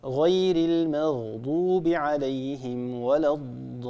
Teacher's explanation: في كلمة الضالين هنا عندنا حرف مد وهو الألف، وبعد حرف المد هنا عندنا لام مشددة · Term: المد اللازم